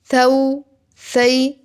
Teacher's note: ثا میں سیٹی کی ساؤنڈ نہیں آئے گی، نرمی کے ساتھ اس کو پڑھیں گے